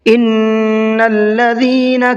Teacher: ان الذین کے نون میں، نون پر تشدید ہے، نون مشددہ ہے، تو نون میں تھوڑا سا غنہ کر کے پڑھیں گے